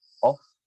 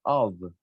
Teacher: Doble F, sí vamos a pronunciarlo así, off, pero la segunda no. La segunda va a tener pronunciación de V, ¿ok? Y lo van a pronunciar of.